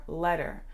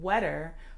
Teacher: she was replacing the L with a W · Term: gliding